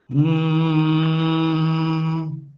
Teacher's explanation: when I am producing this ma sound, air is coming from my nose